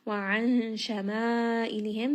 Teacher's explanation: Nun sakin is going to be hidden within the letter shin. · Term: ikhfa